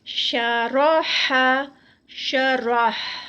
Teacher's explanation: را درمیان میں یہ موٹی ادا کی جائے گی, باقی شین اور ہا موٹا نہیں ہے.